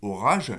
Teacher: entre deux voyelles, j'ai orage, j'ai un re sonore cette fois-ci. Je ne peux pas mettre de re sourd à la place.